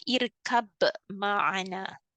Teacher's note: dia baca dengan izhar di sini yang bermaksud bunyi ba tu dijelaskan